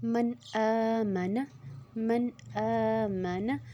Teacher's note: اب نون کے اوپر جزم ہے، آگے حمزہ، تو ہم اس کو غنہ نہیں کریں گے، اور حمزہ کے اوپر جو کھڑی زبر ہے تو ہم اس کو 2 حرکت کھینچیں گے